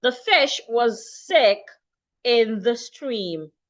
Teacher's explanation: the S in WAS changes to Z.